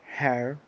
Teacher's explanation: Es una E combinada como una R, una R, her, ¿sí?